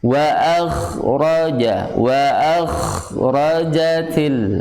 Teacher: Iya, karena ada sifat isti'lanya. Jadi pangkal lidahnya naik ke langit. Tapi tidak boleh menempel, karena kalau menempel jadi idbaq.